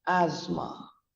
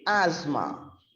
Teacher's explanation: the T and the H becomes absolutely silent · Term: silent letters